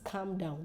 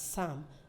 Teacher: the L is not pronounced